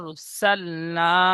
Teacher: র সাকিনের ডানদিকে জবার এসেছে। তাই র কে পুর করে পড়বো।